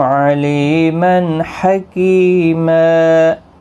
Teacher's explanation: علیمن لی یا مدہ ہے، ایک الف کی مقدار کے برابر کھینچیں گے، اور تنوین کے بعد حرف حلقی کا ہا آیا ہے، یہاں پر اظہار حلقی ہوگا یعنی تنوین کو ظاہر کر کے پڑھیں گے، اخفا نہیں ہوگا۔